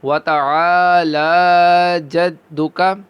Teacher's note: عین کو کھینچ کے پڑھیں گے کیونکہ یہاں پر الف مدہ ہو رہا ہے، اور لام کو بھی کھینچ کے پڑھیں گے کیونکہ یہاں پر کھڑی حرکت ہے، کھڑا زبر ہے۔